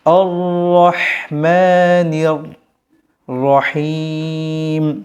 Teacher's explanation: ওখানে আপনি এক আলিফ টেনে পড়বেন নির নির রটা পুরো হবে মোটা করে পড়তে হবে নির রহিম শেষে তিন আলিফ টান হবে